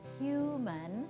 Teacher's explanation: Hu, the vowel sound is long and clear and kind of seems louder, and mun, even though it's spelled M-A-N, you don't really even hear the ah anymore. It's reduced to just a sound. So human has the first syllable accented, and we've reduced the vowel in the second syllable.